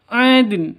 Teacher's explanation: karena hurufnya Qalqalah maka dalnya harus dipantulkan